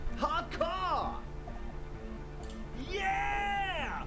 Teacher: This young man adds a capital G before the H in his yeahs and args. This produces a guttural Gotwaldian accent and makes him sound more animal, more in it.